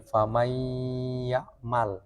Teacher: Ya disertai gunnah yang dipanjangkan